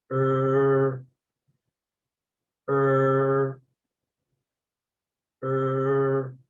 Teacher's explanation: Remember, the tip of your tongue should be curled back and it should never touch the alveolar ridge.